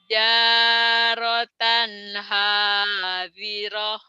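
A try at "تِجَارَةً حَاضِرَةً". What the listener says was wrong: Nah, tapi kedengarannya sama saya jarotan doang, T-nya nggak ke bawah tadi, Bu. Iya, nggak kedengeran ya. tija tijaratan hadirah.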